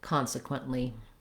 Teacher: In American English, consequent, we just stop that T and release right into the L, consequently. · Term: stopped T